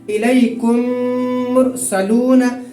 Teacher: یعنی کہ جو میم ہے اس پر تھوڑی دیر ہم آواز روک دیں گے۔ ناک میں آواز روکنے کو غنہ کہتے ہیں